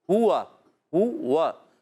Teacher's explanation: ہا پر پیش ہونٹ گول ہوں گے، واو پر زبر تب بھی گول ہوں گے کیونکہ واو کی ادائیگی ہوتی ہے ہونٹوں کی گولائی سے. ہوا ہوا مگر وا کھل جائیں گے کیونکہ زبر ہے.